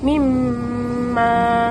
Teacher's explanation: Mim bersabdu pula, bibir tu kena rapat. Kemudian ditekan suara pada pangkal hidung.